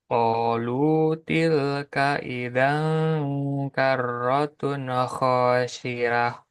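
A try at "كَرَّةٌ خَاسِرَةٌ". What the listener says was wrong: Roh. Jangan rah.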